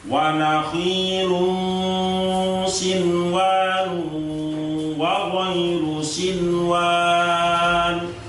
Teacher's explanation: cara membacanya ya tetap dibaca idhar, nun sukunnya itu tidak boleh diturunkan ke wawu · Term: idhar wajib